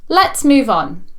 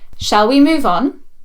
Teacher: ‘Shall’ sentences have a rising intonation, why? Because they are questions.